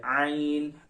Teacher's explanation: आइन जो है वो वस्ते हल्क यानी हलक के दरमियानी हिस्से से अदा किया जाता है।